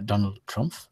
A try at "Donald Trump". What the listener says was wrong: So, the P is a P, not an F.